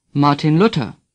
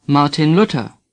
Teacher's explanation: th is pronounced like T